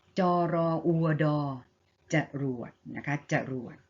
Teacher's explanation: ะ2พยางค์นะคะแล้วก็พยางค์แรกออกเสียงกึ่งเสียงนะคะอันนี้คือลักษณะของกลุ่มที่2ของการอ่านอักษรนำนะคะแล้วก็พยางค์หลังออกเสียงตามสระที่ผสมอยู่และออกเสียงเหมือนกับหอนำนะคะอย่างเช่นคำนี้มีอ่านว่าอะไรคะอ่านว่ายังไงมีพยัญชนะต้นคือจอกับรอนะคะจอกับรอ จอและรอเป็นพยัญชนะต้นนะคะออกเสียงกึ่งเสียงเหมือนมีหอนำนะ